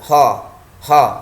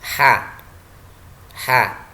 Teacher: sifat istifal ketika kita lafalkan lidah kita turun ke arah bawah